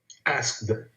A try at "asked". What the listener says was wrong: No, it sounds actually, it's the K sound is here like a T. Choked, asked. So it's like a T sound at the ending, okay?